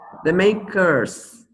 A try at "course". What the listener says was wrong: So curse is maldição. Course. Rhymes with horse. Course. Horse.